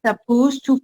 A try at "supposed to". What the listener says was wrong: Supposed to, not sa. Supposed to. Supposed to.